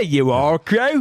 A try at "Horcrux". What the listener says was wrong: I love that you've decided though that in British English they pronounce the UX as though they're French.